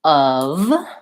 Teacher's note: Of, the errors I hear are that people will use more of an O instead of that schwa sound. And they might say an F because there is the letter F, but it's really a voiced V sound. So that should sound more like of.